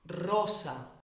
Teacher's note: Os tiene que vibrar la lengua.